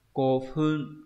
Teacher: mọi người sẽ đọc chữ cô này thấp nhá, và lên ở chữ phun